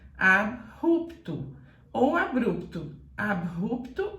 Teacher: em português começada com Uru é Ru quando é assim você tem que falar com o som do R arrastado